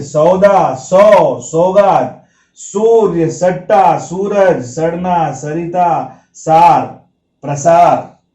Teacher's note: जबान का सबसे अगला हिस्सा जब दांत से टकराता है तो वह स जो होता है दंत्य होता है